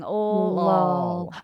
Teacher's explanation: So you go from a tongue tip L to a tongue back L. So So the first one's a light L and the second one's a dark L. We also call it an alveolar L versus a velar L if you want to get very linguistic-y about it.